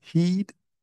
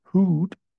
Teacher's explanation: So if we look at E and U, as in heed and hood, they differ mostly in tongue position, right? So when we produce the E, our tongue is raised at the front of our mouth, while the tongue is raised at the back or to the back of our mouth when we produce the U sound.